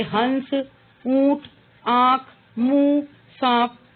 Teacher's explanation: इनमें स्वरों का उच्चारण नाक और मुंह दोनों से किया जाता है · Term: अनुनासिक